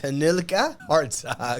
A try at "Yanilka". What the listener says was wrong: It's not Hanilka. It's not an H. The JH becomes a Y sound.